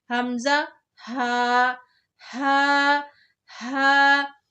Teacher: حمزہ اور ہا جو ہے ہمارا جو حلق کا نیچے والا حصہ ہے جو سینے کی طرف ہے وہاں سے نکلتا ہے